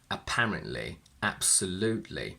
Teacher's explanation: When we create adverbs by adding li, we basically always use a glottal stop